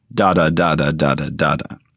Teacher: A standard line of troic tetrometer is eight syllables long, beginning with a stressed syllable and ending with an unstressed syllable